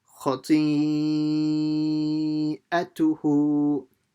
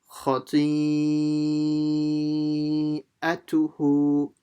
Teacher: see how short I made the a and the tu and the kha, because they don't have any stretches.